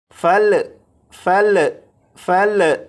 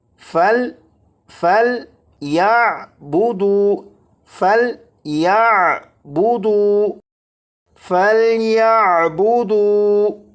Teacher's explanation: یہ جو لام ہے اس لام پر قلقلہ نہیں کریں گے